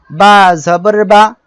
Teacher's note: দুই ঠোঁটের ভিজা অংশ থেকে বা উচ্চারিত হয়